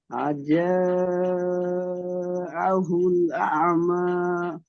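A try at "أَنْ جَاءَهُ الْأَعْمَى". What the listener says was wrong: এখানে দেখেন, আজা পড়লেন, আজা নয়, আজা। নুন সাকিনকে গণনা করতে হবে। নুন সাকিনের পরে ইকফার 15টি অক্ষরের মধ্যে জিম। আজাহুল আ'মা। তাহলে নুন সাকিন কি কেন গণনা করছেন না?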